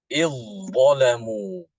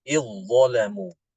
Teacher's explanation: Jadi zalnya itu diidghamkan ke dha.